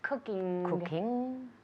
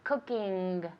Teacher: it's an ng sound which is nasal